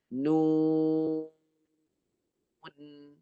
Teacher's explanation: Nun mati dengan gunnah di hidung.